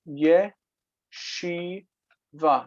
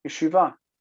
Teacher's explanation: the vowel pattern is a long E, a long A on the end, and a reduced first syllable